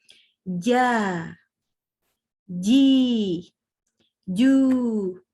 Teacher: jangan di ujung lidah tapi di tengah lidah itu bagian tengah lidahnya Nah ketemu dengan langit-langit mulut bagian tengah juga jadi bukan kenanya ke sini ya bukan ke deket-deket gigi itu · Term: huruf Jim